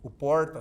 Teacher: fala o r retroflexo